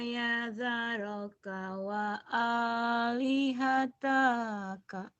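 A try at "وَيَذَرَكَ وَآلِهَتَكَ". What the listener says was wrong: Pendek. Wa yadaraka wa alihataka. Yang panjang dia cuma aja doang ya. Ini doang yang panjang.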